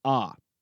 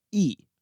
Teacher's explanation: ah is a back vowel and e is a front vowel